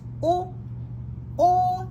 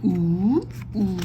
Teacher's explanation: this is considered light vowel, which means it's higher in tone, sounds brighter.